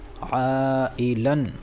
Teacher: اس لیے کہ 2 زبر والی تنوین پر وقف ہو رہا ہے، لہٰذا یہ تنوین الف سے بدل جائے گی اور حرف مدہ کی طرح ایک الف کے برابر کھینچ کر پڑھی جائے گی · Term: مد عوض